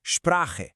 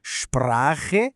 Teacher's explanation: Quando uma palavra começa com SP ou ST, a gente coloca um som de sh na frente.